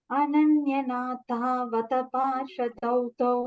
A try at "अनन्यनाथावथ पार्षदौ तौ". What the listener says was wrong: नाथावथ, both the thas Mahaprana. वथ, अनन्यनाथौ वथ. You're saying tha we want. Ananyanathavat. Ananyanatha. Ananyanathau. Thau. Ananyanathavat. No. So you are saying nata, it is not nata, natha. Tha is a Mahaprana. Vatha and not vatha.